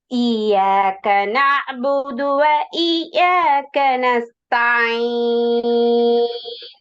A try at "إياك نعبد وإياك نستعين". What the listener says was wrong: அதே போல இய்யாக யால ஷத் எடுத்து உச்சரிக்கணும். இய்யாக நஅ்புது. இய்யாக நஅ்புது யால ஷத் எடுத்து உச்சரிக்கணும். இப்ப யால ஸ்டாப் பண்ணி எடுத்து வருது அல்ல அது மாதிரி யால ஷத்துக்குரிய உச்சரிப்பு எடுக்கணும். அந்த யால இய்யாக இய்யாக யால ஷத்துக்குரிய உச்சரிப்புக்கு தானே அந்த உச்சரிப்பு தான் தேவை. அது முக்கியம்.